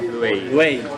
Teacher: It's a diphthong. So blend those two vowels together a little more.